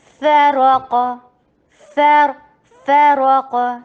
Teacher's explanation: را کو ہیوی کیونکہ را کے پر فتح ہے ، قاف ہیوی کیونکہ قاف غصہ دختن قز میں سے ہے،